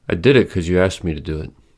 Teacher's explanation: Because is reduced and pronounced as cuz.